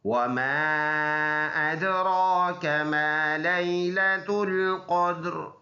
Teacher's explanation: वमा पर फिर छोटा मद है, एक सेकंड के अंदाजे से इसको लंबा करेंगे।